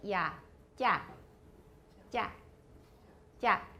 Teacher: A large part of your tongue comes in contact with your hard palate. 所以舌面的蛮大的面积会接触到硬腭. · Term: Palatal stops